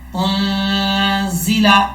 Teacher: زا کو سیٹی کے ساتھ پڑھیں گے، بریک پڑھا جائے گا · حمزہ کو جب نون سے ملائیں گے تو یہاں پر غنہ بھی کیا جائے گا